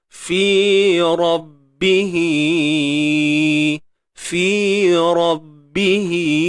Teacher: Ni ra ni tebal lah sebab baris atas kan. · Hi ni kena panjang. Sebab apa panjang? Ni ada ya kecil.